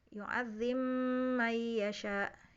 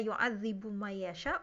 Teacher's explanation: ba-nya diidgham ke mim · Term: idgham yang kabir